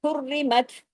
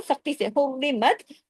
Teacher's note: अब यहां भी इज़हार हुआ क्यों आगे हरफे हल्की हा हुरिमत हुर सख्ती से लेकिन र बारीक होगा